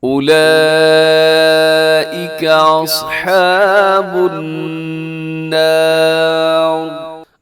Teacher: اصحاب النار، الصاد موٹا ہے اور النار یہاں پر نون مشدد کی وجہ سے غنہ ہے · آخر میں جو را لکھی ہوئی ہے را موٹی پڑی جائے گی